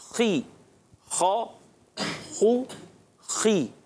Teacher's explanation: खा को पुर रखना है, मगर ज़ेर आने की वजह से थोड़ी पुर में कमी आती है